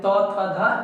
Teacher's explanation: आप जात कर कभी भी प नहीं बोल सकते है और बिना जीव को दांत में ठिका हुए कभी आप दंत यानी त थ ध नहीं बोल सकते हैं